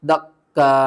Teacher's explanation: دال کاف زبر دک، کاف الف مد حمزہ زبر قا، دکا، لاسٹ میں حمزہ کو جھٹکے کے ساتھ پڑھنا ہے۔